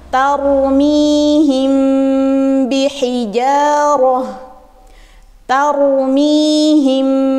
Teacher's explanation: Nah, mimnya dibaca ikhfa. Kenapa? Karena setelahnya huruf ba.